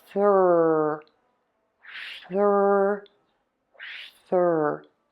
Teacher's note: you can see my tongue is out for that TH. Then I am pulling the tongue into my mouth. The back of my tongue is pulling way high up, and the tip of the tongue is either flipped back or it is pointing down.